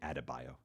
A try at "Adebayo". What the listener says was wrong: D first, B second.